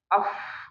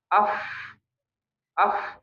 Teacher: Kenapa udara yang keluar deras? Karena tidak tertahan di pita suara ya, tidak menggetarkan pita suara. Itu sifat hams ya.